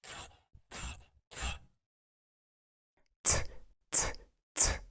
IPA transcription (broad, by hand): t